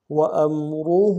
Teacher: حمزہ کو میم کے ساتھ ملانا ہے، میم ساکن غنہ نہیں ہوگا، وا کو موٹا ادا کریں گے، ہا کے اوپر الٹا پیش ہے، الٹا پیش کے ساتھ مد عارض ہے، کم سے کم 2 الف دار میں کھینچیں گے.